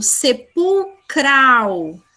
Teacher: Eu falo com o cral mais forte. Então, não é paroxítona.